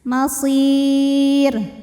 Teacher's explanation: Karena rnya pasti dimatikan, disukunkan kalau berhenti. Sebelum ro yang disukunkan ada ya sukun, maka sudah pasti rnya tipis.